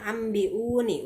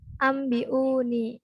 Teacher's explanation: Jadi masuk ke huruf ba ya. Nunnya menjadi hilang. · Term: iqlab